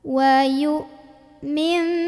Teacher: Ada hamzah punya sifat namanya syiddah, jadi suaranya tertahan ya, kuat.